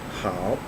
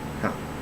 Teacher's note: it is using the third tone, and its pinyin form is H A O.